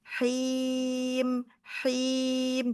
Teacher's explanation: Al-jaufnya jangan masuk ke hidung, haknya him, bersih ya, bersih dari hidung, jangan masuk ke guna.